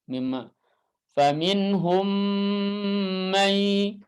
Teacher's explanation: dibaca idgham berarti disertai gunnah, ya, harokatain, 2 harokat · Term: idgham shaghir